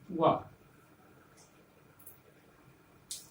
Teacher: व दंतोष्ठ इसका उच्चारण स्थान है, ये वर्ण है वकार दंतोष्ठ।